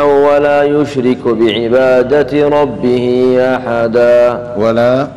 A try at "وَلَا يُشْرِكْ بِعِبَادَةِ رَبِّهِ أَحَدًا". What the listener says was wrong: الكاف إيش عليها؟ سكنها.